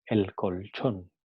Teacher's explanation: En su articulación, la punta de la lengua se apoya en la parte de atrás de los incisivos superiores. L seguido de consonante alveopalatal, ch, adopta un punto de articulación alveopalatal